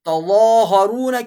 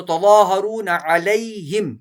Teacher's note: تظاہرون کی ضا کو موٹا پڑھیں گے، ضا کو لمبا بھی کریں گے ، کھینچیں گے بھی، تو تظاہرون علیہم، علیہم بالاسم، بالاسم کی